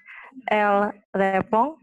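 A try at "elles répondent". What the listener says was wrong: Oui, alors prononcez bien le pluriel, elle répond de. Hein, parce que c'est D-E-N-T, elle répond.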